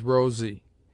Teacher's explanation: It sounds like z before e mute